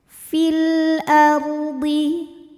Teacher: lam qar sebab alif lam menghadapi huruf qamariah yaitu Hamzah maka lam sukun kita bunyikan dengan izhar atau jelas